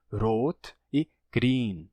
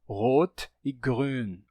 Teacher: a pronúncia antiga ainda com o R na ponta da língua